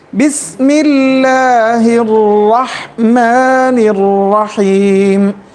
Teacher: اس کے بعد لفظ جلالہ ہے. کسرہ کی وجہ سے لفظ جلالہ کو کیسے پڑھیں گے؟ اس کی ادائیگی کیسی ہوگی؟ باریک ہوگی.